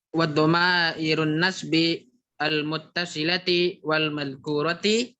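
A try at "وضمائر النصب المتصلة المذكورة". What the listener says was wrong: mana wanya? Enggak ada wanya. Enggak ada wa di sini.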